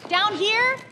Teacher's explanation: Her voice rises at the end of down here. And that upward inflection is what turns a simple statement into a polite question.